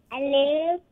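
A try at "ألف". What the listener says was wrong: No, it's not alif, it's alif. Alif, alif. No. Don't say alif. Don't drag the lam. It's just alif.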